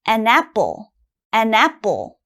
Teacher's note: when you have ann in front it has to sound almost like one word